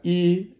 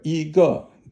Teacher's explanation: So if you have E, it's usually first tone. But if you have 一 个, then E becomes second tone.